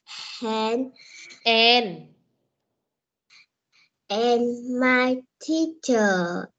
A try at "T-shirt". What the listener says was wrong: Vẫn sai cái từ T này, con tại sao con đọc là teacher được? T-shirt, còn nãy giờ con đọc là t-shirt. Có chữ s thì đọc sao? Thì đọc bằng âm s. T-shirt.